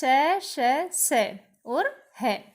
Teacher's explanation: अब है ऊष्म व्यंजन। इन व्यंजनों के उच्चारण में मुंह से रगड़ खाने के कारण हवा में ऊष्मा अर्थात गर्मी सी पैदा होती है।